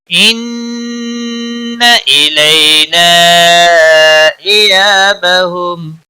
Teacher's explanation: ان نون مشدد پر گنہ ہوگا